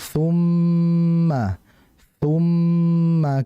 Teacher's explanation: Karena mim dan nun bertasydid maka itu ghunna yang bermakna bahwa kita mengucapkannya dengan menahan dengan dengungan. Dan dengungan sendiri cara pengucapannya melewati hidung ya. Maka ditahan terlebih dahulu.